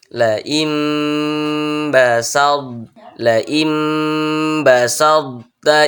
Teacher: sifat itbaq pada huruf tho itu tetap ada apa itu sifat itbaq yakni terkumpulnya suara antara lidah dan langit-langit